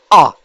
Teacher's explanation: विव्रत स्वर यानी मुख पूरा खुला हुआ।